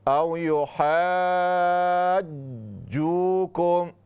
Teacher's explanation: जीम पर शद है, आवाज़ को रोक लें, थोड़ा शद को अदा करें